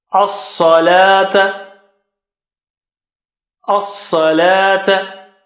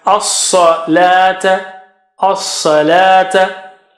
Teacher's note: Sa is very high and thick. Very thick and high. And la is back.